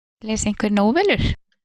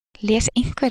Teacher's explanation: So this thing here is the stressed syllable, and then the peak is reached much later than the stressed syllable. Whereas in rhetorical questions, the peak is actually reached in the stressed syllable of the word. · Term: alignment